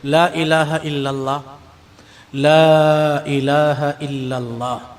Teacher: لا الہ الا اللہ میں جو حروف ہیں وہ سب کے سب زبان سے ادا ہوتے ہیں، ہونٹ نہیں ہلتے۔ لا الہ الا اللہ، لا الہ الا اللہ، زبان چلی، ہونٹ نہیں ہلے۔